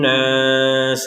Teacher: jadi Nun bertasdid didengungkan 100%.